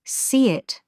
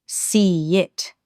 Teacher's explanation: some Londoners almost seem to sneak in an extra sound between words, like a little ye or w that wasn't there before. That's what's known as an intrusive glide.